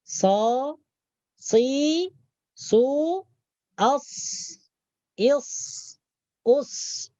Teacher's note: Jadi ketika kita menyebutkan huruf sod, maka hujung lidah kita bertemu gigi bagian bawah, bagian dalam.